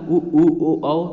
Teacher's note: जो हमारा मुख गोल होता है उ ओ औ, तो वो वर्तुल कहलाएगा।